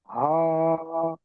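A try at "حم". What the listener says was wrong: হা অল্প টান, হা একালিপ। হামিম।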